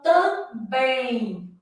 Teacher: O segundo M tem som de I.